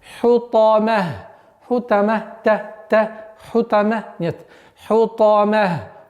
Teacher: Та, максимальная твердость, проявляем свойства твердости и эмфатичности у звука та.